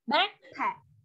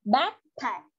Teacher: chữ p sau thì cũng phải p ra, bật ra.